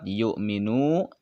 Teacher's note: waw sukun, sebelumnya ada huruf yang berharkat domah. Ini adalah mad tobi'i atau mad asli, dibaca 2 harokat